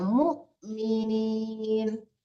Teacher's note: Muk dipentokin ya, mematikan amzah.